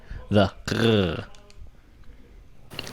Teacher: The top part of the back of your throat, you close it, and it sort of makes that almost guttural GH sound you will sometimes hear in French.